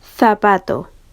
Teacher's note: la lengua se va a situar entre los dientes superiores e inferiores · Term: interdentales